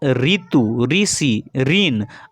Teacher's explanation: ऋ का हिंदी में शुद्ध प्रयोग नहीं होने के कारण ऋ र प्लस ई के उच्चारण के रूप में प्रयुक्त होने लगा है।